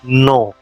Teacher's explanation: we do not pronounce the last letter N. There is a nasal sound.